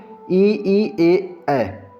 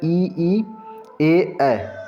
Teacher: हमारे जीभ के अग्र हिस्से से उच्चारण होता है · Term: अग्र स्वर